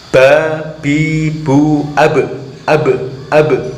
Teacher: Terus huruf ba ketika disukun, ketika berharokat sukun, ini mempunyai sifat qalqalah. Maksudnya ketika huruf ba bersukun maka harus ada suara pantulannya